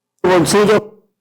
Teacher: ante consonante obstruyente sorda, los hablantes debilitan la consonante líquida cambiando el modo de articulación. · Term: debilitamiento